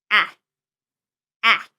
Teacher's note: In English, the A sound as we know it doesn't exist. The A is very open and frontal and you must see the tongue.